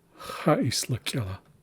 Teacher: So we tend to not include the schwa or the E in between the S and the L.